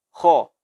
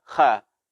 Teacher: Adalah huruf tafkhim yang haknya mesti kita berikan adalah ditafkhimkan. Jadi kita baca kha, bukan kha.